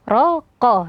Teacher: huruf ro dibaca tebal karena fathah, begitu juga dengan qaf, raqa dibaca tebal.